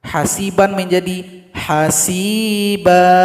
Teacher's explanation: cara berhenti atau berwakaf pada fathatain dua baris di atas itunya harokatnya hilang satu kemudian panjangkan dua ketukan